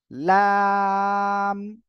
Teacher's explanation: লাম হলো জিহ্বার আগার কিনারা, তার বরাবর উপরে, মানে উপরে মাড়ির দাঁতের গোড়ার সঙ্গে লাগিয়ে উচ্চারণ হবে।